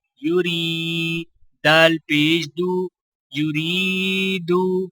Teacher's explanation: را کے نیچے زیر ہے تو لہٰذا را کو باریک پڑھا جائے گا اور آگے گول دائرہ وقف کی علامت ہے تو لہٰذا وقف کیا جائے گا.